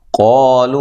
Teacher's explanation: قا الف مدہ، ٹھیک ہے، قاف کو موٹا کرنا ہے.